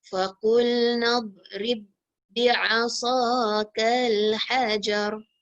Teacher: Terus ra terus masuk pada ba. Tak boleh kita bunyikan qalqalah. Tak boleh bunyi b.